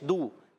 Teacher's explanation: واو مدہ کو ایک الف کھینچ کر پڑھتے ہیں